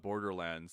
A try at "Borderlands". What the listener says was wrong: I just don't think anyone really stresses it as much as you do. Like you're clearly saying lands. Like, but it makes sense because if you said when I think about it, it's Wonderland, Tomorrowland.